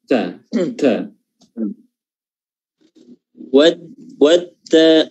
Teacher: Hamsnya kurang ya, sifat hamsnya kurang di huruf ta. Watta. Nafasnya, udaranya.